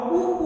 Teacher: उ का उच्चारण स्थान ओष्ठ है